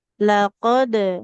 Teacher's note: Dipantulkan huruf qofnya karena sukun.